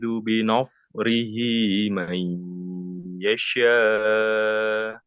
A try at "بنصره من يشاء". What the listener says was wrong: Nah, yang pertama short ini tebal kan? Nah, nunnya tipis. Jadi hati-hati nunnya jangan ke bawah tebal. Binos, nah, itu tebal kan? No, nos. Harusnya nah, nos. Nanya tipis, shortnya tebal.